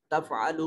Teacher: تفعلوا میں عین کو حلق سے ادا کریں گے